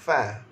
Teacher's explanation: Makhraj huruf fa syafatan, gigi atas sentuh bibir bawah.